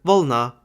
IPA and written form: ˈvɤɫnɐ (въ̀лна)